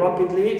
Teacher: So, here ra is stressed, but not li. Li is neutral.